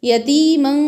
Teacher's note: यतीमन मीम के ऊपर जो तनवीन है इस पर इख्फा होगा क्योंकि तनवीन के बाद जो आने वाला हर्फ है वो फ़ा है।